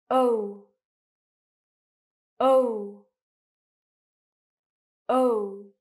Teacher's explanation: O is actually a diphthong. So it's two vowel sounds. O. So as you pronounce it, as you can see, my mouth is quite round. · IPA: /əʊ/